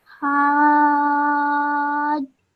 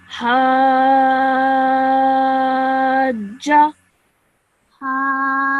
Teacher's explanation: So what you do is you elongate that sound of ha for 4 seconds minimum